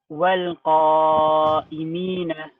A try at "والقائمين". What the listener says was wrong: You have to make the alif thicker. والقا. Look at the difference now. قا قا والقائمين.